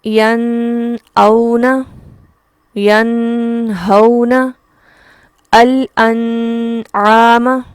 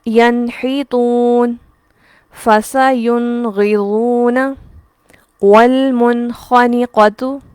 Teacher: ہم نون کو اس کے مخرج سے ادا کریں گے اور ساتھ ہی اگلا حرف ادا کر لیا جائے گا، یہاں رکنا نہیں ہے اور یہاں غنہ نہیں کرنا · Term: اظہار